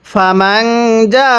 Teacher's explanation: জিমের মধ্যে 4 আলিফ টান দিব, হরফের উপর মোটা চিহ্ন, মদের হরফের উপর মোটা চিহ্ন, এরপরে গোল হামজা থাকলে সেখানে 4 আলিফ টেনে পড়তে হয়। · এই নুন সাকিনের মধ্যে গুন্নাহ করব, কারণ এখানে নুন সাকিনের পরে জিমটি হলো ইকফার হরফ